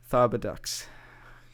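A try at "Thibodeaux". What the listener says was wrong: No, it's Doe. Thibodeau. Deaux. That's O. Anytime you see EAUX, that's O.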